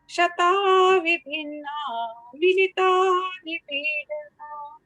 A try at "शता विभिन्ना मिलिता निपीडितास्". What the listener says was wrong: हाँ, इसमें स तक पढ़ना है, निपीडितास तक है ना। शता विभिन्ना मिलिता निपीडितास्।